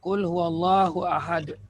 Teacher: Asal surah Al-Ikhlas ni kalau kita wakaf, Qul huwallahu ahad. Kita ambil nafas, jadi dal yang mati, yang dal tanwin ni jadi sukun. Qalqalah kubra.